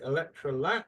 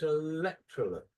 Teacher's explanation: in Thailand you tend to stress the last syllable. So you would say electrol but the actual stress is electrollet.